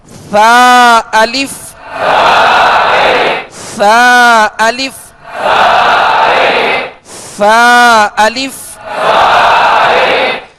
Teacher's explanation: کیونکہ قرآن پاک کو بغیر تکلف کے اور لطافت کے ساتھ پڑھنے کا حکم ہے، لہذا ادا کرتے ہوئے سرا زبان یعنی ان تین حروف میں ثا ذال وا جو کہ نرمی کے ساتھ ادا کیا جاتے ہیں، ان میں سختی نہیں ہوتی، سیٹی کی آواز نہیں ہوتی، اور ان کا مخرج ہے سرا زبان اوپر کے دو دانتوں کا اندرونی کنارہ